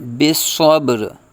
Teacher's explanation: آگے وقف ہے تو را کو ساکن کریں گے